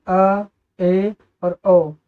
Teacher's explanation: अर्ध विवृत स्वर क्या होते हैं, अर्ध विवृत स्वर विवृत की तुलना में थोड़ा कम खुलता है।